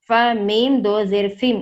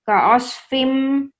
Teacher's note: جب ادغام کریں گے یعنی ملائیں گے تو فا کو میم میں ملائیں گے